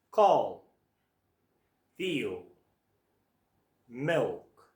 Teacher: We make the dark L sound by moving our tongue towards the back of our mouth. The sound is coming from around here.